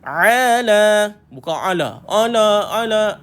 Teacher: Tolakkan ain. Betul-betul dekat kita punya halkum tu, rasakan kat situ.